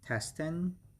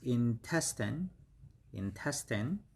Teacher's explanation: So the stress is on the second syllable.